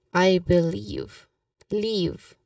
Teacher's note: Here in I believe, it says emphasize the second syllable